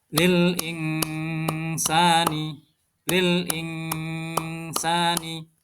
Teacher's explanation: cara membacanya dengan Samar juga dengan mendengung atau ditahan dua harakat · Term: bacaan Ikhfa